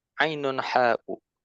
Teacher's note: huruf ain dan huruf ha, yang mana keduanya keluar dari wastul halqi, ya, tenggorokan bagian tengah